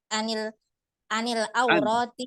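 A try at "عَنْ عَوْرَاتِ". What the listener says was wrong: An ya. An aurat. Ini tuh sukun ya. Nunnya sukun.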